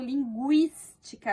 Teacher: o G e o U, aqui eles não estão com um som só. Eu falo linguística, eu falo o som do U, eu não falo linguística, tá?